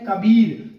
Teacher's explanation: कबीर में बलाघात बी पर है